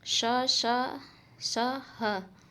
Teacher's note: मुख से निकलने वाली वाय रगड़ या घर्षण के साथ निकलती है उसे उष्म मजन कहते हैं इसमें श स स ह आता